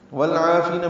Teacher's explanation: عین حروف قمری میں سے ہے، وسط حلق سے ادا ہوگا، لمبا کریں گے 2 حرکات.